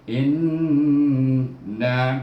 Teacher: hamzah baris bawah bertemu dengan nun bertasydid, baca dengan gunnah 2 harakah.